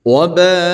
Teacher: Karena dia adalah mad wajib muttasil namanya ya. Jadi 5 harakat bertemu dengan hamzah ya dalam satu kalimat. Kemudian U-nya juga dipanjangkan, namun panjangnya hanya 2 harakat.